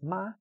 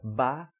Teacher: Bilabial, de nasal, nós temos ma, vozeada plosiva ba, desvozeada plosiva pa.